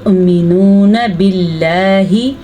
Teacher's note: अल्लाह का नाम बारीक पढ़ेंगे क्योंकि अल्लाह के नाम से पहले ज़ेर है।